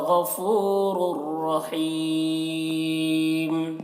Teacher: रॉ को रा से मिलाकर बग़ैर गुन्ना के पढ़ेंगे, जिसको इदगाम बिला गुन्ना कहते हैं।